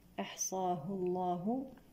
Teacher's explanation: لام لفظ الجلالة هنا مفخم لأن سبقه ضم